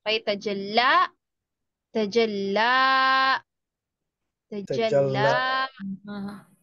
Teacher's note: It's another long vowel. So we have now two long vowels. So we will make it 2 seconds.